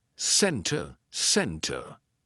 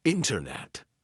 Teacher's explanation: Usually, if the T comes after an N, we drop that T and we do not pronounce it. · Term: silent T